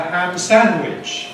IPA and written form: ˌhæm ˈsænwɪʤ (ham sandwich)